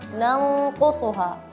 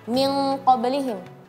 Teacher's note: Dia gunnah yang keras atau ya gunnah keras, yaitu ketika nun sukun setelahnya ada qaf dan kaf, dan gunnah ghair syadidah ketika huruf-huruf yang selain qaf dan kaf. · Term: gunnah syadidah